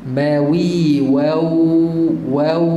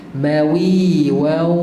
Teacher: Idgham masuk maal ghunnah berserta dengan dengung. Maksudnya kena ada suara hidung. Kalau tak ada suara hidung bunyi dia macam ni. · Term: idgham maal ghunnah